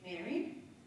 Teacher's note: you will see a rising pitch that starts always on the second syllable. It doesn't matter how many times you say this word, we always have the same pattern.